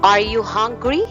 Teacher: are you hungry the tone is rising right